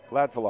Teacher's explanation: I think it's accent on the first syllable, if I remember right.